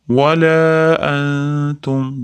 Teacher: Antumda ikfo. Ya'ni nunni tga yashiramiz.